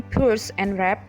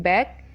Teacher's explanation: Bilabial is like P as in purse and wrap, B as in bag, M as in mat.